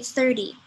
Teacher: we say this as if the T is actually a D